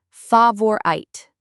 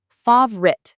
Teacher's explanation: Many people say favorite, 3 sounds, but native speakers usually just say 2.